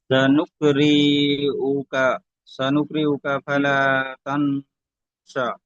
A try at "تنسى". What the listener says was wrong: তা তা এখানে নুন সাকিন কি গুণনা করবেন? তা সা।